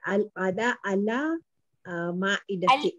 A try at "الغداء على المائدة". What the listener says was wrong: Al-ada, not al-ghada'u. Ala الغداء على المائدة.